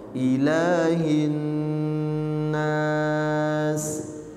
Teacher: Ilahnya diayun dua harokat.